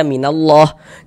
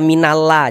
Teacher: huruf lam jalalahnya itu kita baca tebal, kita baca takkhim. Sehingga kita baca minallah, jangan dibaca minalla, jangan tapi dibaca minallah seperti itu.